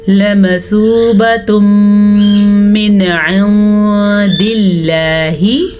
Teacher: अब बात करते हैं यहाँ पे मौजूद कायदे की, जिसे इदगाम बिल गुन्ना कहते हैं। तनवीन के बाद मीम आने की वजह से यहाँ पे इदगाम बिल गुन्ना होगा। गुन्ने के साथ हम पढ़ेंगे लमसूबतुम मिन इंदिल्लाहि।